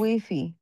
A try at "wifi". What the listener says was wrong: wifi একটু stress চাপ দিতে হবে, হ্যাঁ